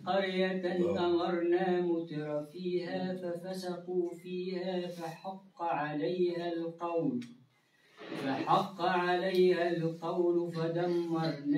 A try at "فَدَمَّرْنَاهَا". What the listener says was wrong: لا زيد شوية الميم نقولوا دم شو سيدي الباهي دم فدمرناها تدميرا